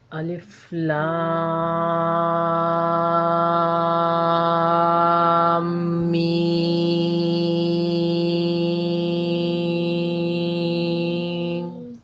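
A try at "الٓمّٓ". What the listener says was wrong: الف لام میم، یہ غنہ نہیں تھا، یہ میں نے آپ کو بتایا تھا کہ جہاں میم پر اور نون پر شد آئے گا وہاں آپ نے اس کی آواز کو تھوڑا سا دبانا ہے۔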